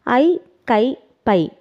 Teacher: ஐகார எழுத்து தனித்து வரும் இடங்களில் தனக்குரிய இரண்டு மாத்திரை அளவில் முழுமையாக ஒலிக்கிறது